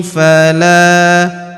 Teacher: Huruf la kita panjangkan dua harakat karena terdapat alif di depannya